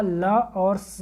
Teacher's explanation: इसके अलावा ल और स आता है, ल और स उच्चारण करेंगे तो आपको पता चलेगा कि जीभ जो है दांतों को टच करता है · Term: दंत वर्ण, दंत्य वर्ण